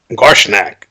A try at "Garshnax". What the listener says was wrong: Nax. Nax with an X. Garshnax.